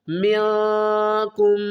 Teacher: اخفا کریں گے، نون کی آواز کو چھپا کر پڑھیں گے